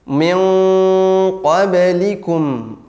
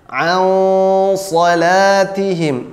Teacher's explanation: bunyi dengung pada nun sukunnya akan menjadi tebal